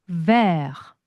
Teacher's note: 마지막 T 발음 하지 않습니다